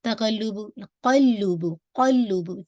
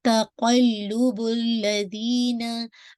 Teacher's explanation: तक़ल्लुबुल्लज़ीना, ठीक है, क़ाफ को हैवी कीजिएगा, लेकिन मेक श्योर ऐसे नहीं पढ़िएगा, तक़ल्लुबु क़ल्लुबु क़ल्लुबु, मेक श्योर लाम पे ट्वाइस हिट करना है